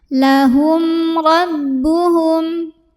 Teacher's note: Karena ada mim sukun yang menghadapi huruf selain mim dan ba, yaitu huruf ro. Maka cara baca mim sukunnya dibunyikan dengan idhar atau jelas bunyi M-nya tidak perlu ditahan. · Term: idhar syafawi